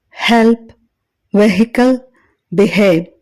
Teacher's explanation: దీనిని పలికేటప్పుడు గ్లోటల్ ప్రమేయంతో గాలి బయటికి రావడం గమనించవచ్చు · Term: అన్ వాయిస్డ్